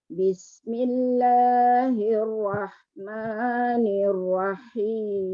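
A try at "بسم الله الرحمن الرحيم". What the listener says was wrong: Nanti sebut ra dulu. Ra. Jangan gabung ra dengan ha, tak boleh gabung ya. Ra, ha. Walaupun ha tu mati tapi ra tu tak boleh tarik ha tu. Hukum dia izhar kat situ. Kalau ditarik ha nanti bunyi rah pula.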